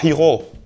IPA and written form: ˈi.xo (hijo)